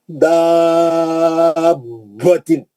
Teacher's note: बा साकिन का बा मुतहर्रिक में इदगाम हो रहा,